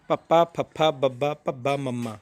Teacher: ਇਹਨਾਂ ਦਾ ਉਚਾਰਨ ਕਰਨ ਸਮੇਂ ਆਪਣੇ ਦੋਵੇਂ ਬੁੱਲ ਜੁੜਦੇ ਆ। 2 ਹੁੰਠੀ ਵਿਅੰਜਨ ਧੁਨੀਆਂ ਨੇ ਇਹ।